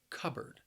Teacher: The word has two syllables, and the stress is on that first syllable. Cupboard. Notice that the word is spelled with a P, but when I say it, it sounds a little more like a B sound.